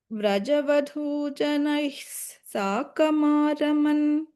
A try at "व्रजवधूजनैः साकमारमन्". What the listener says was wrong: That visarga rule was missing.